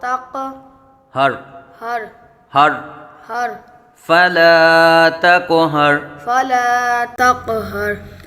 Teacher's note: تا کو باریک پڑھیں گے قاف کو پور پڑھیں گے اور قاف پہ قلقلہ کریں گے